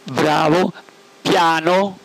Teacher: quei colpetti saltuari generati dalla pronuncia delle consonanti b e p